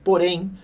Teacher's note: uma palavra separada silabicamente, onde a sílaba mais forte é a última, né? Então, porém, a última, oxítona, oxítona terminada em "en", essa é a sua justificativa.